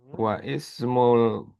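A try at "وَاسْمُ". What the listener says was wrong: Langsung wasmu bukan wa ismu.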